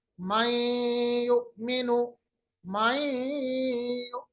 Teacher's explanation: आवाज को हमने नून की आवाज को या के साथ मिलाया, इदगाम किया और गुन्ना भी किया। गुन्ने का मतलब होता है नाक के बासे में आवाज दे गए।